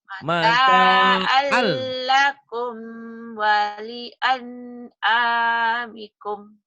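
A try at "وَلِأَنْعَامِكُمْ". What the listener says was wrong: Kumnya jangan ditahan ya, idhar sapawi. Mata'allakum wali an'amikum. Yuk, jangan ditahan. Walinya jangan ditahan. Walian. Mata'allakum walian Idhar ya. Komnya idhar komi mati, walian idhar nun mati. Mata'allakum walian amikum.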